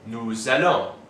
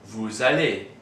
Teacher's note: These two begin with vowels, which means that the S of nous and vous will be pronounced.